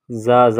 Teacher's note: زا کی ادائیگی میں دانتوں کو آپس میں سختی کے ساتھ ملائیں گے اور زا میں سیٹی کی آواز پیدا کریں گے۔